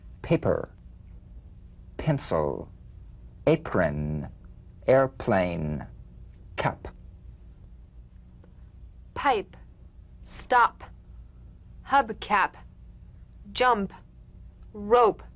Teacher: On the springing away, feel a B in a whisper without any puff of air. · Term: drumbeat P